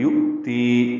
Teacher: الذی یؤتی، یا الگ پڑھیں گے، حمزہ ساکن ہے، واو کی شکل میں جھٹکے سے پڑھیں گے. یؤتی، تی یا مدہ ہے، 2 حرکات لمبا ہے.